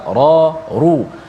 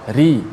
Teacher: atas dan depan tebal ra, ru. Adapun ra bila baris bawah ri, dinipiskan bunyinya.